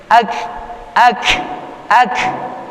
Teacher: ada huruf kaf yang kita berikan hamasnya